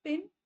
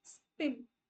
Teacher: तो ये aspirated पी हो जाएगा जब आप पिन बोलोगे, जब स्पिन बोलोगे तो अनएस्पिरेटेड पी हो जाएगा। इसे हम एलोफोन बोलते हैं बच्चों।